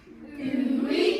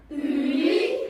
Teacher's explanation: Now we haven't got a w sound. It's not we, it's u going into an e, and we get ui.